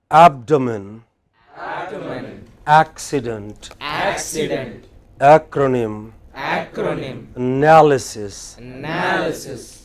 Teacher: All of these words have main stress on the pre-final syllable, third syllable from the from the end, right?